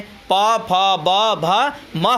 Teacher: और प वर्ग जो होता है प, फ, ब, भ, म होता है, इनका उच्चारण स्थान जो क्या होता है ओष्ठ के द्वारा बोला जाता है